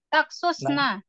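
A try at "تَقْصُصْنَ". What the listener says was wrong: Nah, enggak boleh lebur dia, Om. Taksusna.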